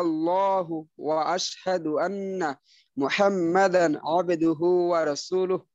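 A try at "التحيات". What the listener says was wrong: এই নরম ভাই আত্তাহিয়াত তা কিন্তু একটু লম্বা হয়ে গেল তাই তো টান নেই তো এখানে খেয়াল রাখবেন যেন একটু বেশি সময় না নেয় আত্তাহিয়াত আত্তাহিয়াত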